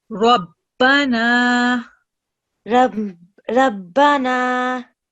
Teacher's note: the letter Ra has a fatha stroke, so we're going to keep the sound thick. · Try and keep the sound thick and heavy.